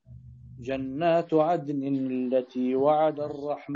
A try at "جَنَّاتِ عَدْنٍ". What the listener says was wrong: التاء التاء التاء التاء وش عليها التاء جنات عدن. لا جناتي.